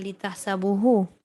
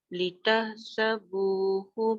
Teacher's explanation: Bu panjang, hu yang pendek.